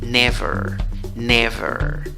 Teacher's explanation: En la segunda sílaba, en la escritura va una E, en la pronunciación no va una E, va schwa, la que no es ni A, ni E, ni O.